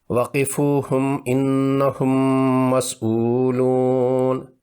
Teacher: میم مشدد کا غنہ کرتے ہوئے دونوں ہونٹ بند کرنے ہوتے ہیں۔ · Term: ادغام شفوی